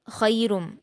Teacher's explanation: خا پر یا لین ہے تو معروف پڑھیں گے اور خا کو پر پڑھتے ہیں